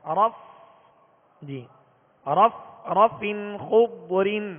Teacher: اوپر کے دانتوں کے کنارے اور نچلے ہونٹ کے تر حصے سے فا ادا ہوتا ہے